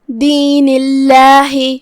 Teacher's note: یہاں لفظ الجلالہ کا حکم ہے ترقیق، مطلب ہم اسے ہلکی آواز میں پڑھیں گے کیونکہ اس کے پہلے والے حرف کے نیچے زیر ہے.